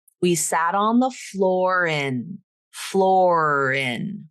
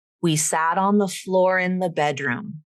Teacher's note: Just extend that R sound to the beginning of the word in.